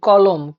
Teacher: আমরা যদি মানে চেষ্টা করি যে ক, ক কে উচ্চারণ যদি করি কলম, ক এর সঙ্গে অ আসছে, ল এর সঙ্গে অ আসছে, ম এর সঙ্গে কিন্তু অ আসছে না